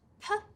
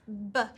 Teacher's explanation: we turn our voice off for unvoiced, P, and we turn it on for voiced, B. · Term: voiced and unvoiced